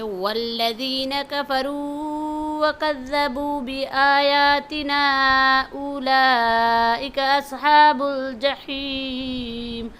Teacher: اس میں را کو کفروا کے را اور اصحاب ان کے صاد کو موٹی آواز سے پڑھیں گے